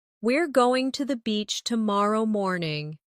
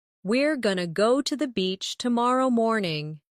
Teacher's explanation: Going to often becomes gonna in casual speech.